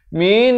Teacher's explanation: Lafz jalalah dibaca tebal 2 harakat.